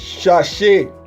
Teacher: Sonido como el de la sh en Chile. Este es un sonido sordo.